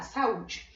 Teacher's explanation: Duas vogais juntas, saúde, mas na separação eles ficam separados. O A e o U vão se separar, saúde. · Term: hiatos